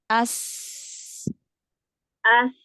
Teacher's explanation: sin itu punya sifat sofir, dia desisannya tajam, ya. Maka dia harus jelas gitu sofirnya.